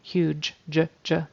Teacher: the final consonant that g sound which actually is sounding like a j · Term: j sound